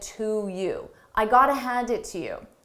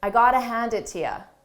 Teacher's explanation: I said to you, but native speakers will frequently reduce both of these and say to, ya, or ya.